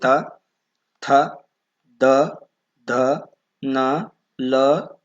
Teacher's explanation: ದಂತ್ಯ ಅಕ್ಷರಗಳು ಅಂದ್ರೆ ಹಲ್ಲುಗಳ ಬಳಿ ಹುಟ್ಟುತ್ತವೆ ಸೋ ಹಲ್ಲುಗಳ ಬಳಿ ಹಲ್ಲುಗಳ ಸಹಾಯದಿಂದ ಹುಟ್ಟುವ ಅಕ್ಷರಗಳನ್ನು ನಾವು ಇಲ್ಲಿ ಉದಾಹರಣೆ ನೋಡಿದ್ರೆ